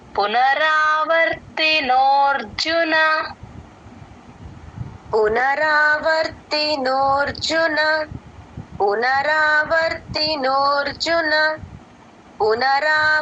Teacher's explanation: ఆ రా ని కొంచెం ఎక్స్టెండ్ చేయకుండా నోర్జున సరిపోతుంది